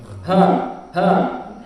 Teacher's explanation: Di mana tempat makhraj huruf H, yaitu aqsal halq